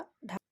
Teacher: शीघ्रता से नीचे आती है अतः इन्हे उपत व्यंजन कहते हैं जीभ है ऊपर जाती है और झटके के साथ नीचे आती है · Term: उच्छिष्ट व्यंजन